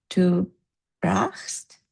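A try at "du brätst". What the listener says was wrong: Careful. It's an umlaut.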